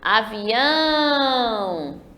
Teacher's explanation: percebam que eu demorei mais no ão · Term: oxítona